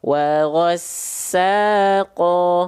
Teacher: Ya, fathah ketemu sama alif dibaca dengan kadar panjang 2 harokat. Nama hukumnya adalah mad tabi'i.